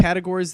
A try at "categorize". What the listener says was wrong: almost a word. you put a weird emphasis on a wrong syllable.